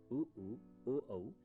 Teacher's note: उ, ओ, औ जिह्वा के पिछले हिस्से से उत्पन्न होते हैं